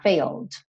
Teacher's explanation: Não pronuncio E, então, ó, fail, tô com a língua no céu da boca, põe esse desenho para fechar, failed.